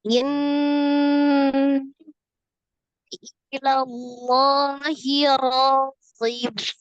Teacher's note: In nun tasdid nun musaddadah wajibul ghunnah akmal matakun. Nun tasdid wajib ghunnah paling sempurna gitu ya.